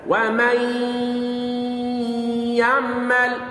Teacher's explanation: لذهاب الحرف وبقاء الصفة. النون لم تكن واضحة في النطق ولكن صوتها ما زال موجودا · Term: ادغام بغنة ناقص